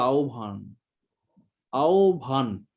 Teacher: এই ব প্লাস হ, উচ্চারণ কিন্তু ভ, অল্প প্রাণ ধ্বনির সঙ্গে হ যুক্ত করলেই মহাপ্রাণ হয়ে যায়।